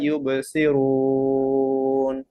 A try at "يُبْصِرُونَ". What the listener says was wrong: ইউবাসিরুন রুটা মোটা করেন ইউবাসিরুন